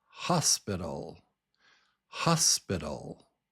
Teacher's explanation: The first syllable is strong, hos, and then pital. Hos pital. Hospital. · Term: strong syllable